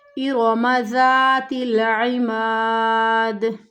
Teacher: ارم، را موٹا پڑھا جائے گا